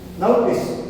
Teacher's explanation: यहां ध्यान दीजिए, इसका जो स्टैंडर्ड उच्चारण है, मानक उच्चारण जिसे कहेंगे IPA, इंटरनेशनल फोनेटिक एसोसिएशन ने जो निर्धारित किया उच्चारण हुआ है ये। नोटिस यहाँ ओ है, वो अ और उ ये डिफ्थॉन्ग दे रहा है। यहाँ पर ओ की ध्वनि सिर्फ अ का लाइट साउंड, शॉर्ट साउंड दे रहा है।